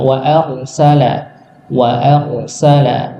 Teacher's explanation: huruf ro ini ya ketika sukun sebelumnya fathah maka dibaca tebal